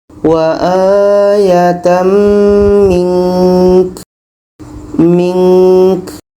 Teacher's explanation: Contoh wa akhirina wa aatam mink mink nun dibaca ka pun dibaca kebetulan di sini nun mati nun mati bertemuka hukumnya ikhfa ikhfa hakiki ada dengung jadi kita dengungkan dulu baru matikan ka k ka ini sifatnya Hamas berangin. Jadi harus kita baca hamasnya ada anginnya.